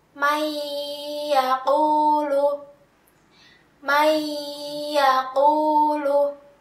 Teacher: ya adalah salah satu huruf dari huruf Idgham Bighunnah maka kita membacanya dengan memasukkan nun sukun tersebut ke dalam huruf ya dan disertai dengungan satu Alif atau dua harokat